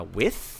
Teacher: es un fricativo dental que no es sonoro. O sea, no hay vibración en las cuerdas.